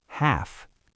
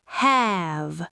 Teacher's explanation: This is a great one because the spelling's tricky, but the phonetic rule's identical. Half ends in the unvoiced F sound. Short vowel, half. Have ends in the voiced V sound. Long vowel, have.